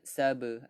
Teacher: ba sini qalqalah surah, lantunannya kecil, jadi kita akan bacanya saba, ada lantunan saba.